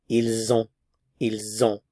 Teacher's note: because a vowel follows, we do pronounce the S. There is liaison